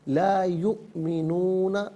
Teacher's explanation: حمزہ چونکہ ساکن ہے تو حمزہ کو جھٹکے کے ساتھ پڑھا جائے گا